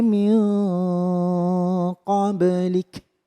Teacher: Kemudian ada min qoblik nun sukun bertemu qaf, ini juga bacaan ikhfa yang harus didengung tiga ketukan dan di qoblik ba nya memantul karena bacaan qalqalah